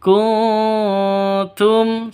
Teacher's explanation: nun mati bertemu dengan ta samar cara bacanya samar didengungkan siap-siap ke huruf tnya kunum seperti itu kuntum taknizun mim mati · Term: ikhfa Hakiki